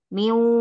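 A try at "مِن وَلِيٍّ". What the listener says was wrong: Oh, miumnya kurang kurang ini Bu saja, kurang panjang. Berapa Bu saja? Empat ya Bu saja. Meu, meu, ya. Oh, ininya nggak monyong tadi.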